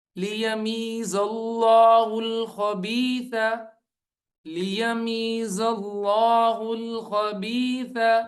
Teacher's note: لِيَمِيزَ اللَّهُ الْخَبِيثَ لِيَمِيزَ اللَّهُ الْخَبِيثَ من الطیب من الطیب. یہاں پہ زا جو ہے لام کے ساتھ ملے گا زلہ، لام موٹی ہو کے پڑھی جائے گی